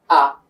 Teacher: হামজার মাখরাজ ছিল হলকের শুরু, তো হামজা জবর আ, এইভাবে পড়তে পারি।